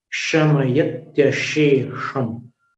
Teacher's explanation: शमयत्यशेषम्, दो श का उच्चारण तालव्य है, जीभ को नीचे वाले दांत के पीछे करके शे, शमयत्यशेषम। अंतिम वाला जो श उसका उच्चारण जीभ को ऊपर सिर की ओर लेके करना है